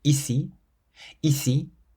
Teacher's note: We stress the second I, the bit at the end